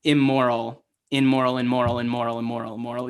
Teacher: You double up on the M sound.